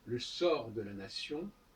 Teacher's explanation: on n'entend pas le T de sort